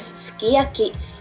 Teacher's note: The S is not entirely silent but it trails off to the point where it disappears